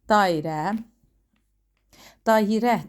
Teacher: Dairə. Dayirə deyə tələffüz olunur. Burda səs artımı var.